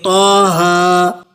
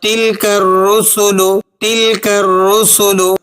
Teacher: تو کی آواز بھاری، گہری اور پر اثر لگتی ہے